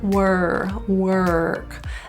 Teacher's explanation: The issue in this word is always the R. That R is curled, so feel the tongue tip curl back.